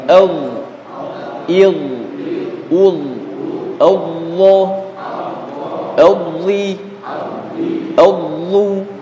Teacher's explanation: terangkatnya pangkal lidah ke langit-langit di atasnya, atau terangkatnya lidah paling belakang ke langit-langit lurus di atasnya. Itu yang membuat tebal ya. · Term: suara tebal